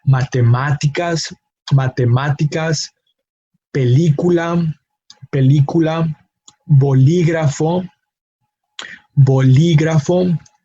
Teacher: the emphasis falls in the third to last syllable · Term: palabras esdrújulas